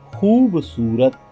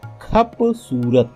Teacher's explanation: कभी कभी सघोष व्यंजनों का अघोषीकरण हो जाता है, जैसे खूबसूरत, खपसूरत।